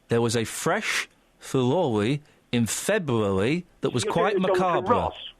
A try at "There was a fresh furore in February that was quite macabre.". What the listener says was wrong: You're doing a Jonathan Ross, which is an imitation of the Andalusian lisp. You're always doing that.